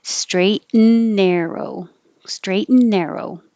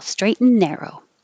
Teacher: So the T kind of gets combined with the N. You don't hear the T at all.